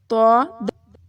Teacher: طا موٹا پڑھنا ہے اور تا کو باریک پڑھنا ہے